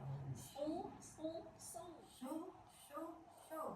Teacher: Bukan suaranya dinaikin tapi pangkal lidahnya dinaikin. Nah itu kayak seperti bersihin dari bersihin dari situnya.